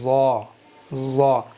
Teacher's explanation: नोक ऊपर के दांतों पर लगाएंगे, नोक पर ऊपर के दांतों की, और थोड़ी सी ज़बान की नोक दांतों से बाहर निकाल करके रखेंगे और अदा करेंगे ज़ा ज़ा।